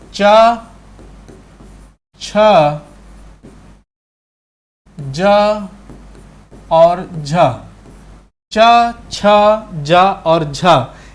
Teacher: च छ ज और झ यह चार वर्ण जो है वह क्या कहलाते हैं स्पर्श संघर्षी व्यंजन कहलाते हैं